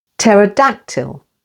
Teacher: pterodactyl with the stress on the third syllable